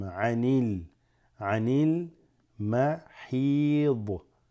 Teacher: Alif drops, goes straight into the lam